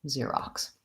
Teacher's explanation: So it's spelled with an X, Xerox. And first syllable stress, long, short, Xerox.